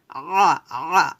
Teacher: আইনটা কিন্তু চাপ দিয়ে বলতে হবে গলার মাঝখান থেকে